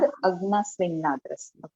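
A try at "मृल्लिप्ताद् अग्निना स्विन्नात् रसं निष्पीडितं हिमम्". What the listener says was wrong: नहीं स्विन्नात, फिर रसम निष्पीडितम हिमम, ऐसे पढ़ेंगे, स्विन्नात रसम निष्पीडितम हिमम, ऐसे स्विन्नात तक रुक के। हाँ हाँ, वो संधि विच्छेद करें, स्विन्नात, स्विन्नात त है आधा त, फिर रसम,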